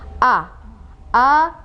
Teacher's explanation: huruf hamzah penyebutannya A jadi jelas ya di tenggorokan bagian bawah